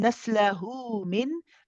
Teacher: We have here a mad waw. This mad waw is what we call mad silatu sughra, and it is prolonged for 2 counts, which is what we call harakatain.